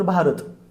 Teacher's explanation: भा 2 मात्रा, र 1 मात्रा, त 1 मात्रा